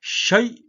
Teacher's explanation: 점 하나 찍히면 거성이니까 가장 높은 소리니까